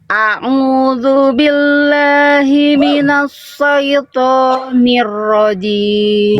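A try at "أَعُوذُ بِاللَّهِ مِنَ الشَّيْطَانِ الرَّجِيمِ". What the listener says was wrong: Bukan minosso, minasya. Shin. Minasyaitonir rajim. Coba. Coba A. Nah, A-nya biasa aja Iya, jangan a'udzu biasa aja a'udzu billahi minasyaitonir rajim. Coba sya Bunda, sya. Minasya.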